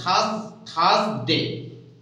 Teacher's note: Thursday, R here, R is silent